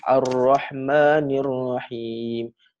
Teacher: Kita macam tahan dia punya lidah tu dengan tempat kat bahagian gusi atas tu. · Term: takrir